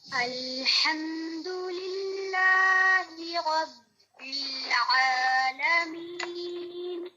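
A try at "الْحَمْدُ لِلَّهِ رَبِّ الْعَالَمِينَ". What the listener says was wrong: الحمد میں اس میں لام کو آپ نے موٹا نہیں کرنا، ال نہیں پڑھنا. ٹھیک ہے؟ یہ ہے ال، باریک ہے.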